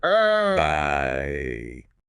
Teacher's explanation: You start wide open with an a sound and then your jaw closes and your tongue pushes up to an e sound.